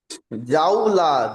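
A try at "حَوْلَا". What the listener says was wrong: সত্যি কি জিম এসছে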